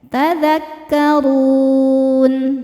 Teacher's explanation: Huruf ro dibaca secara tafkhim karena harakatnya dhammah. Cara bacanya ditebalkan. Dun saat berhenti hukumnya mad arid lukun.